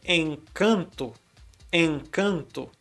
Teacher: 2 vezes o som de N está causando apenas a nasalidade para a vogal que está vindo antes